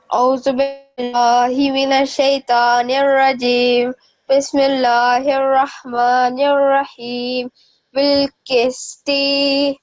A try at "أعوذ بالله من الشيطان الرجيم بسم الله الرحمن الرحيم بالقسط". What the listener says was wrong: Can I just remind you that one stroke means 1 second. So don't prolong the dot. Don't prolong this letter.